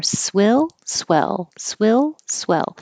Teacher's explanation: swell as in yes e the tongue is more flat and the Jaws a little lower